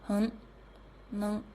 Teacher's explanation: in rapid speech in N and Ng, it can be pronounced as schwa.